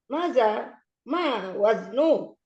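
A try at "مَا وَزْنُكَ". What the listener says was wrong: Pendek. Ma waznuka? Enggak panjang. Ma waznuka?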